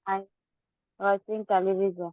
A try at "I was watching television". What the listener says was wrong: watching. See, you are not speaking clearly. Watching, W is not at all clear.